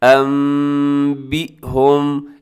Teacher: نون ساکن کو ہم میم کے ساتھ چینج کر دیتے ہیں انبئهم، اور ساتھ ہم اس کی غنہ بھی کرتے ہیں انبئهم۔ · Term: اقلاب